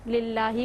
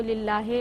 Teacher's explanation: एक मारूफ लहजा होता है जिसे अरबी लहजा कहते हैं और दूसरा मजहूल लहजा होता है जैसे लिल्लाही को लिल्लाहे लोग तलफ़्फ़ुज़ करते हैं